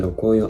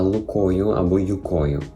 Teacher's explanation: коли звук р відсутній повністю, людина його пропускає або ж вона його замінює, наприклад, на звук л або ж й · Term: простий ротацизм